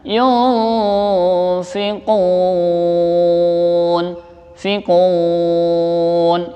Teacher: Itu namanya hukumnya mad arid lis sukun. Artinya mad yang benar-benar kita baca sukun, panjangin ya untuk berhenti. Yunfikun, membacanya sebanyak 4-6 harokat.